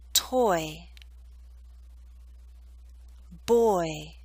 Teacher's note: it may help you to know that we're using a slight Y sound y to make this Glide possible